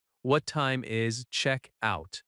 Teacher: Notice that check-out can be two words and the stress is on check.